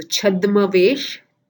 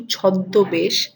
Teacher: It is the change of the v sound of vesh to besh. So the v changes to b.